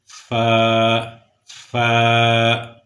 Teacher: اوپر کے دانتوں کا کنارہ نیچے کے ہونٹ کے ساتھ، اندرونی ہونٹ کے ساتھ یعنی تر حصے کے ساتھ جب ٹکرائے گا تو اس وقت فا ادا ہوگا